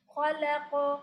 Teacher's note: لام کو نہیں موٹا کر دیں گے قاف کی وجہ سے, اور قاف پہ قلقلہ کریں گے اور قلقلہ بھی مستعلیہ ہی ہوگا, موٹا.